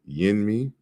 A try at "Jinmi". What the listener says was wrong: No, it's a J. It's Jinmi. Jinmi.